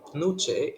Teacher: the coda consonant switches position or metathesizes with the vowel